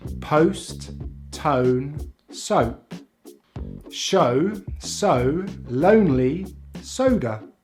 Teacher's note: we glide into the short vowel sound /ʊ/, which we do by closing the jaw, rounding the lips and just putting the tongue back slightly in the mouth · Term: oh diphthong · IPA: /əʊ/